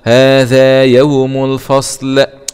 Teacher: همزة وصل وسط الكلام لا تنطق